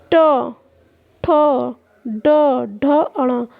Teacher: जब हम जीभ, जो हमारी जीभ होती है उसे जब हम उल्टा करेंगे तो उसकी आगे की जो नोक का निचला भाग मूर्धा से स्पर्श करता है। मूर्धा जो हमारा कठोर तालु का मध्य वाला भाग था उससे स्पर्श करता है, तो उससे जो ध्वनि उत्पन्न होती है उसे मूर्धन्य व्यंजन कहते हैं।